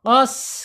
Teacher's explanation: mengalir suaranya, mengalir napasnya ketika sin ini sukun. Contoh, qas, kalau di kita sukunkan ini sin, qas gitu, mengalir ya. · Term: al-hams